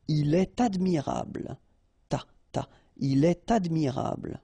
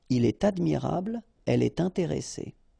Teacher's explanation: you should make the liaison, and in that case, it's with T